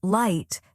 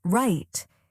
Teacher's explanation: Can you feel how your tongue stays up for L and curls slightly back for R?